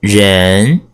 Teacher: one is Jen Jen means people Jen second tone tongue is second tone from a lower pitch to a higher pitch